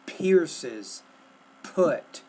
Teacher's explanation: You're not producing or pronouncing the P with enough air.